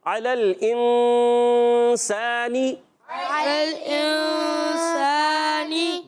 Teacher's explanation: 15 حروف جب آتے ہیں نون ساکن تنوین کے بعد تو اخفا ہوتا ہے یعنی غنہ ہوتا ہے ناک میں آواز لے جاتے ہیں اور ناک میں لے جا کر نون کو چھپاتے ہیں